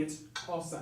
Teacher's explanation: It's Xhosa. There's a click in there.